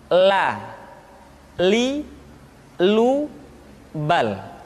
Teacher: huruf la diucapkan dengan mengangkat ujung lidah kita dengan disentuhkan dengan langit-langit.